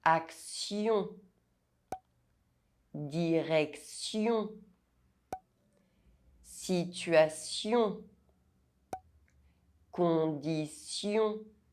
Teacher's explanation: Be careful, the ending -TION is pronounced [sjɔ̃]